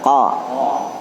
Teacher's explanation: Qaf ini pangkal lidah tarik ke dalam.